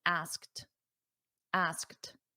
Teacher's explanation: Notice that pronunciation, asked. It ends in a very soft T.